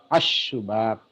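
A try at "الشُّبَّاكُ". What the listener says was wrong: Baknya bertasdid, baknya bertasdid.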